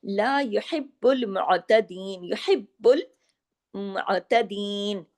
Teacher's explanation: बा पे तशदीद है ना तो डबल बा होगा